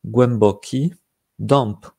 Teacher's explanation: Quand il y a un P ou un B, ça se prononce comme s'il y avait un M.